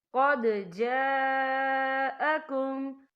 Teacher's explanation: یہاں دیکھیں قد، یہاں دال ساکن ہے تو یہاں پر کلکلا ہوگا، اور آگے دیکھیں جا، یہاں خالف سے پہلے زبر ہے اور اس پر مد بھی ہے، اور یہ مد جو ہے مد متصل ہے، اس کی مقدار 4 حرکت کے برابر ہے، تو ہم اسے 4 حرکت کے برابر کھینچ کے پڑھیں گے